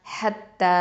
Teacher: அடுத்தது ஹ ஃபத்தா த ஷத்தா ஹத், த ஃபத்தா அலிஃப் சகைரா த, ஹத்த. இந்த ஹ அப்படிங்கிறது வசத்துல் ஹல்க்கு நடுத்தொண்டை